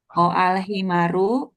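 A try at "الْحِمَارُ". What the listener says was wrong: Maknya panjang.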